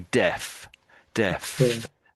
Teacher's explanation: And to get that F, that sound at the end, I'm using my lower lip.